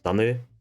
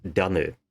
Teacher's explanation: We have an example, Nias, an Austronesian language, where the ergative for land is tanö and the absolutive is danö. So here the difference is whether or not it is voiced.